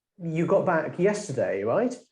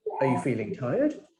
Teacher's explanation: using a rising tone to ask the question that you think you know the answer but you just want to confirm